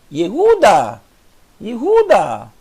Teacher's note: Veja que é tão rápido o I com o Sheva que você nem consegue ver o E.